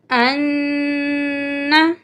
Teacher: نون مشدد ہے، نون پہ ہم غنہ کریں گے۔ غنہ کا مطلب ہے ناک میں آواز لے جانا